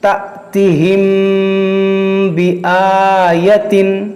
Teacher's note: یہ حمزہ ساکنہ ہے تو اس میں جھٹکا دے کر پڑھیں گے